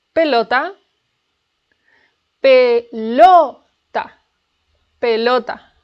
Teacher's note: The stress is in LO. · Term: stressed syllable